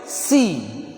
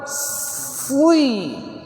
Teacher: Kalau sa, keluarkan semuanya udara. Kalau so, ada udara yang ditahan di pertengahan.